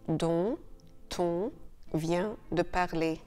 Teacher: Think of the liaison sound actually transferred onto the following word. So it's a little bit like this final silent letter has moved to the start of the following word.